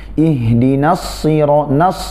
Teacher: nun di sini tipis masuk kepada huruf shad yang tebal. Jangan sampai nunnya terbawa tebal pula. Ya, jadi pentingnya memperhatikan antara huruf yang tebal dan huruf yang tipis.